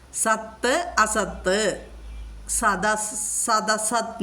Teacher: സത്ത് എന്നുള്ളത് മൃദുഗണം മൃദുവാകും